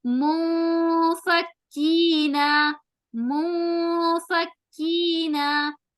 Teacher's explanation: تو یہاں ہم اخفا کریں گے, نون کی آواز کو چھپائیں گے اور چھپاتے ہوئے غنہ ہوگا.